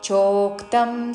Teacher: చో దీర్ఘము దాని మీద ఆఘాతం